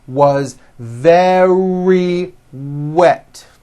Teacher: very starts with a V sound followed by a strong R.